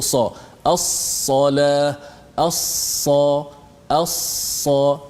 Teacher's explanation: Lidah kita terangkat sehingga suara itu terperangkat di antara ruang lidah itu ke langit.